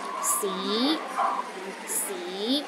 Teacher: the second tone starts with the low pitch and rises to a high pitch